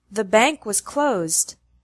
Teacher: We put the emphasis on Bank and closed